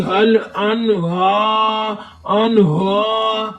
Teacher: ہا کے اوپر کھڑی زبر ہے، یہ ہا کی آواز سینے کے جوڑ سے نکالے. کھڑی زبر ہے، کھڑی زبر کو ایک الف کی مقدار کھینچ کر پڑھیں گے.